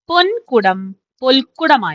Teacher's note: വർണ്ണങ്ങളുടെ സ്ഥാനം ഉയരുകയാണ് ഇവിടെ ചെയ്യാക ഉദാഹരണം നോക്കൂ പൊൻകുടം പൊൽക്കുടമായി മാറുന്നു ഇവിടെ വർത്സ്യമായ നകാരം ദന്ത്യമായ ലകാരമായി മാറുന്നു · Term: ഉന്നാമം